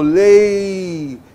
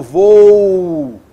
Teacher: Você nota então que você tem uma vogal seguida de uma semivogal. É um som mais brando.